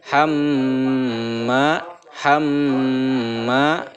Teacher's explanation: cara membacanya itu mendengung dan menahan dengungannya itu selama 2 atau 3 harokat. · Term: gunnah